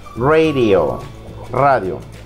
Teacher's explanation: Y la D suena como R y decimos radio.